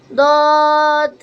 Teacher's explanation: জিহ্বার গোড়ার কিনারা উপরের মাড়ির দাঁতের গোড়ার সঙ্গে লাগিয়ে দদ, মোটা হবে দদ কিন্তু মোটা হরফ।